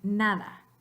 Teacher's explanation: the sound still has to come out your nose, but your tongue is touching or getting close to your alveolus, the alveolar ridge right behind your teeth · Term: the n sound